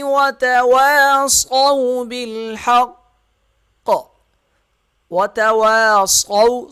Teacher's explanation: صاد موٹا ہوگا، واو زیادہ نہیں کھینچا جائے گا، صو کھینچا نہیں جائے گا اور الف نہیں پڑھا جائے گا، بال با لام سے مل · پڑھا جائے گا، بال با لام سے مل جائے گا، اور حق قاف جو ہے وہ تشدید ہے، اس کی وجہ سے یہ سخت پڑھا جائے گا اور موٹا پڑھا جائے گا